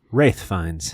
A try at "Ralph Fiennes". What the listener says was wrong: It's not Wraith. Rafe. No. There's an F sound at the end, not a T.